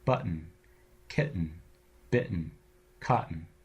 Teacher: whenever you have a word where T precedes a syllabic in the T goes away and it's replaced by a catch in the back of your throat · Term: syllabic N